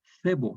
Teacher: la Z actual, que es una interdental sorda